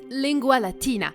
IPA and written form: ˈlɪŋɡʷa ɫaˈtiːna (lingua Latina)